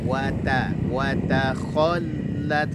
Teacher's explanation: lamnya bertasydid, berikan nabrah penekanan suara